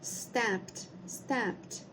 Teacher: algumas vezes quando a gente tiver o D no final a gente vai pronunciar com o som de t